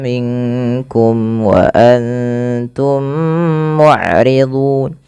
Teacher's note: jelaskan mimnya karena dia ishar syafawi